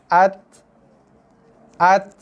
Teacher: Dia ada keluar angin, hembusan nafas sikit. Selepas kita tekan pada makhraj. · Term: ta mati